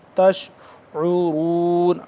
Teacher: لا تشعرون، تشعرون، عین کو نکالیں گے حلقے درمیانی حصے سے تھوڑا سا کھینچ کے